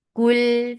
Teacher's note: Kul for the circular lips. As you will touch lam, your lips should be in a straight position because they were circled because of this dhamma on kaf.